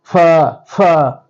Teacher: উপরের দাঁত নিচের ঠোঁটের পেট এবং বাতাস বেরিয়ে যাবে